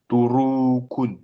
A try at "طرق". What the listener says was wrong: Là, il n'y a pas de prolongation. Turuqun.